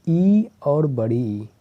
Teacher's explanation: ई और बड़ी ई, ये दोनों निकलते हैं तालु से, केवल और केवल तालु से।